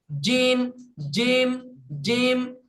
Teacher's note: জিমটা শক্ত করে জিভের মাঝখানের হয়তো ওপর তালু বরাবর।